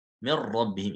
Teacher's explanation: Jadi sifat nun yang gunnah tidak ada lagi sifat nunnya. Jadi langsung ke ra. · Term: idgham kamil